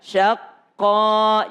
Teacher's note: Sya tetap tipis, qaf tebal. Jadi syahnya tipis, qafnya tebal.